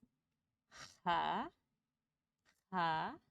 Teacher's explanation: It's a very deep, like breathy H. I would say it's kind of the noise you make when you're trying to clear, if you're trying to fog up glass, you go, think of that kind of breath you make.